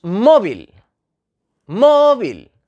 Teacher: tiene la sílaba tónica en la penúltima posición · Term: llana